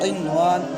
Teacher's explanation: قن کے نون پر غنہ نہیں ہوگا، نون ساکن کے بعد واو آیا ہے، واو میں الف مد ہے۔